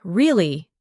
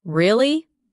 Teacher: when you ask a question like really, your voice goes up slightly at the end. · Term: Intonation